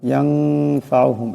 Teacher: নুন সাকিনের পুরো ফা আসছে, ইকফার একালি পরিমাণ গুণনা হবে।